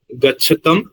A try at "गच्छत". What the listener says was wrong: नहीं, there is no halanta, say gachata, very clear, gachata. If you say gachat, it becomes a very different thing. It becomes a very different thing. It becomes something related to the Kshatri pratyaya. That you cannot do here. Gachat is from gam plus Kshatri.